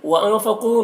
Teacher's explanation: نون میں اخفا ہو رہا ہے، نون کی آواز کو ناک میں چھپا کر پڑھیں گے۔ قاف حروف مستعلیہ میں سے ہے، پر پڑھیں گے اور یہاں پر واو مدہ ہے، ایک الف کے برابر کھینچیں گے۔